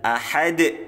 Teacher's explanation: ini bacaan Qalqalah kubro huruf Qalqalah yang matinya mendatang